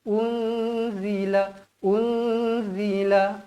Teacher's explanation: dengung dua harakat hukumnya ikhfa Hakiki